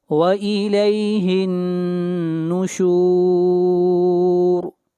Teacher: ہا کو ملائیں گے نون کے ساتھ، اور نون کے اوپر شد ہے، غنہ ہوگا، اور یہاں پر را کو موٹا پڑھا جائے گا، وَإِلَيْهِ النُّشُورُ۔